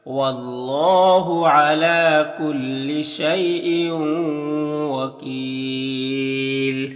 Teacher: यहाँ पर अल्लाह के लाम से पहले वाव के ऊपर ज़बर है, तो अल्लाह के लाम को पुर पढ़ेंगे। खड़ा ज़बर है, एक अलिफ के बराबर खींचेंगे।